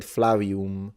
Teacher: he said flav with a W